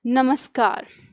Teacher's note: म का मेल यानी इस विसर्ग के साथ इसका मेल क से हो रहा है। जब आपस में मिलते हैं तो यह विसर्ग बदल जाता है। दंत स में।